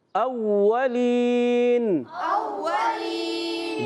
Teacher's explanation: آپ نے آپ جو پڑھے نا اوّا نہیں پڑھنا، اوّا پڑھنا، ہونٹ گول کریں گے، صحیح ہے؟ اوّا یعنی آپ فا کے مخرج سے واو نہیں پڑھیں گے